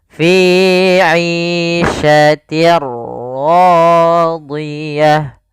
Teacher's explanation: Apa yang dimasukkan adalah suara tanwin. Awalnya fi 'ishatin, ketemu ra, maka langsung masuk di ra-nya, bunyinya langsung ke huruf ra. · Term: idgham bila gunnah